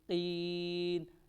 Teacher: اس قاف کو موٹا پڑھیں گے